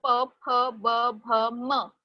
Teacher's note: When both lips are coming together and when they are touched, then the sound is created and that is p or f or b or bh or m. तो इसीलिए ओष्ठ्याहा.